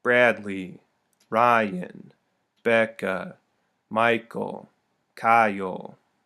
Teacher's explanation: the first beat this time is accented and the second is unaccented · Stress on the first syllable, unstress on the second. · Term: trochaic